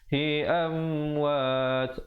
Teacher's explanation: Mim mati yang datang selepasnya huruf waw hukum izhar syafawi, jelaskan saja tanpa dipanjangkan